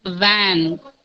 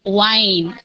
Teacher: You have to bite your lips. Van, van. W-I-N-E, that is not wine. You should not bite your lips. You have to round your lips.